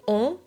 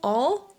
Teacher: on is an opening of the mouth but a closing of the lips, so the lip muscles are at play. On, whether en doesn't require any contraction, any usage of the lips.